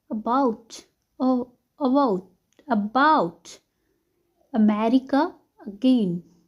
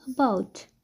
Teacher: यहाँ पे ज़्यादा स्ट्रेस नहीं देना होता है, हम लोग बस बहुत शॉर्ट में प्रोनाउंस करते हैं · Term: श्व साउंड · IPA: /ə/